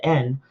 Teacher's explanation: the N in yoruba is a little more nasally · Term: nasal consonant sound